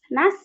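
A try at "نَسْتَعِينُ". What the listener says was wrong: Nah, itu kayak ada nah, kayak kekumpul di sini ya. Tapi kalau sin dilepas aja. Ular desisnya. Nas. Ya, coba bilang nastar. Ya, nasta'inu.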